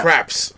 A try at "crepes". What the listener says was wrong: No, crepes. It's an E, not an A. Crepes.